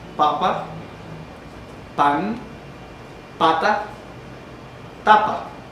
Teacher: La primera que usted encuentra es la oclusiva bilabial, sorda con aire pulmonar egresivo